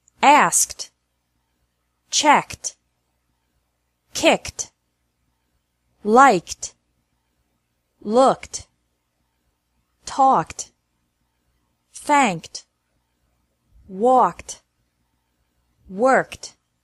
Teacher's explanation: Ed is pronounced like T after verbs ending with a k sound